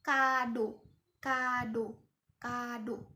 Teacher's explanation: lidah naik ke atas dan ke belakang. Bibir itu membulat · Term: O yang bulat